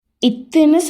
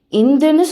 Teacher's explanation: இத்துன்னு சொல்கிறப்ப காற்று வாய் வழியாக வெளியேறும். இந்துன்னு சொல்கிறப்ப காற்று மூக்கு வழியாக வெளியேறும். ரெண்டு ஒலியுமே ஒரே இடத்துல உருவாகும்.